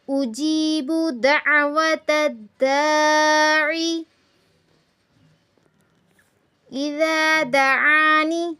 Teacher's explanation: اجیب میں یا کے پیچھے زیر آئی ہے، اس لیے تھوڑا سا کھینچیں گے